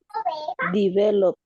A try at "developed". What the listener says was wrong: with the ed. What is the pronunciation with the ed? The P sound is voiceless or voiced? The P sound, this P. Voiceless or voice? Okay, so what is the pronunciation for voiceless?